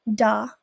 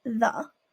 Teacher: in Tagalog, both voiced and voiceless TH are replaced with a D or a T. For example, da instead of the.